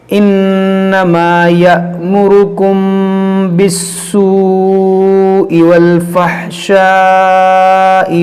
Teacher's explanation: انما یأمرکم بالسوء والفحشاء وان تقولوا، یہاں پر دیکھیں یأمرکم، یہ حمزہ ساکنہ ہے، اس کو ہم جھٹکا دے کر پڑھیں گے۔ یأمرکم اور میم ساکن کے بعد با ہے، یہاں پر اخفاء شفوی کریں گے